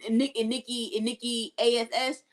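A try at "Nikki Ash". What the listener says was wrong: ASH. I mean, ASS is okay, but it's ASH.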